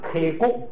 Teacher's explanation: 如果是在一个词的第2音节的话，发送气很费劲儿，它就不送气了 ，就变成那个就是轻音变成浊音，就变成咕，就那k就发成了歌，就不送气了，就省事了。本来是k哭，就变成k咕，k咕就是这个元音符号的名字。我要是说嘎k咕g，就是嘎加上k咕，就是加上一，就歌一g，嘎k咕g。藏族同胞们学这个读课文的时候啊，就是这样来读的。老师上来什么都不讲，上来就是嘎k咕g啊，嘎k咕g，卡